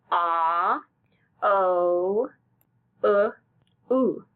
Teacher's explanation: mouth shape grow smaller and rounder as he says the sounds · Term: rounded sounds